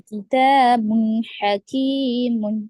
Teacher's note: تا پہ الف مدہ ہے نا, تھوڑا سا کھینچیں گے دو الف کو